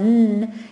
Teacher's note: You tell the child that your tongue should not touch the top of the palate, because when you say the sound n, you're touching the palate. The tongue is touching the root of just behind the 2 front teeth.